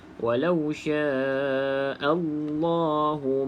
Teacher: dibaca dengan tebal sebab sebelumnya baris atas kan walauya Allah tapi pastikan a tu dijelaskan bunyi a bukan o